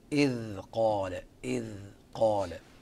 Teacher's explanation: أبرز الأحكام بعجالة إظهار الذال قبل القاف